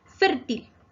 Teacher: Fértil se acentúa en la penúltima sílaba fer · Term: palabra grave